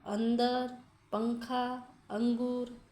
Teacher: इसके उच्चारण में हवा केवल नाक से बाहर आती है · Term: अनुस्वार